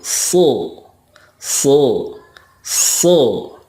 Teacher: Shod makhrajnya sama dengan Sin, tetapi pangkal lidahnya diangkat atau digemakkan